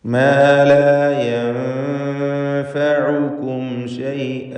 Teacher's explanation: മാ ലാ യൻഫഉകും ശൈഅ, ഇവിടെ യൻഫഉകും എന്നതിൽ അന്ത്യത്തിലുള്ള സാക്കിനത്ത മീം, അതിനുശേഷം ഷീനാണ്. മീമിനെ ഇൽഹാർ ഷഫവി നൽകി മണിക്കാതെ വെളിവാക്കണം.